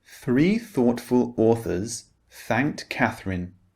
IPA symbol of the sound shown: θ